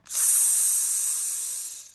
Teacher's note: pushing out air from clenched teeth to release tension out of the lungs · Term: S sound